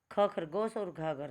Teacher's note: उन व्यंजनों को बोलते समय हमारे मुंह से हवा ज़्यादा बाहर निकलेगी, ज़्यादा मात्रा में बाहर हवा निकलती है, तो उन्हें महाप्राण कहते हैं